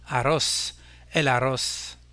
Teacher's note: Le mot riz se termine en espagnol également par un Z, qui n'est ni N ni S. L'accent portera donc sur la dernière syllabe du mot